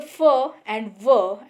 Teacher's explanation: when upper teeth and lower lip touch to each other he is called labiodental when we pronounce the fur and ver